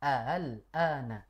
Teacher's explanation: dibaca dengan meringankan huruf hamzah yang kedua. Namanya tashil. Jadi di sini boleh kita baca dengan tashil, yaitu meringankan bacaan yang hamzah yang kedua.